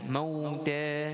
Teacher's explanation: Kalimah al-mauta tadi bacaannya mauta, bacaan lin, kemudian ta dengan bacaan mad 2 harakat, dipanjangkan 2 harakat.